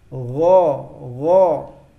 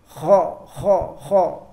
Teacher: kalau huruf ghin tidak usah ngorok seperti huruf kha. Dia lebih halus bacanya. Gho. Dan perlu diperhatikan kalau baca huruf ghin itu bukan huruf qalqalah.